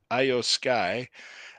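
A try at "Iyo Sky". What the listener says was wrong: EO, EO Sky. is pronounced with the E sound for some reason.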